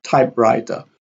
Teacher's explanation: Typewriter, type here has a primary stress, and writer has a secondary stress. So a compound word has a combination of primary and secondary stress.